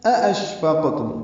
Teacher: حمزہ کو شین سے ملاتے ہوئے شین ساکن ہے، اس پہ ہمس اور تفشی ہوں گے، منہ میں آواز پھیلے گی، سانس جاری رہے گی، قاف ساکن پہ قلقلہ ہوگا، میم ساکن پہ اظہار ہوگا.